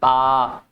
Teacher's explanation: आपके होठ आपस में एक दूसरे को टच करते हैं। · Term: ओष्ठ